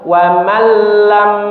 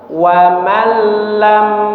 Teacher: Tidak dibaca waman lam tapi langsung dimasukkan ke huruf lamnya.